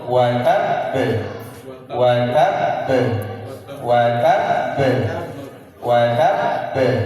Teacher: tidak boleh langsung diqqalqalahkan karena ada tasdid. Sehingga ditahan terlebih dahulu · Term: ditasdidkan